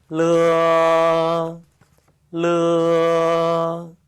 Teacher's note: 이 르어 발음은 오라이 할 때 라처럼 떨어져 있다가 튕기면서 가는 게 아니고요. 붙여져 있다가 떨어진다는 거 · 혀끝이 윗 잇몸을 받쳐주고 있다가 뚝 떨어지면서 발음을 하시면 되겠습니다.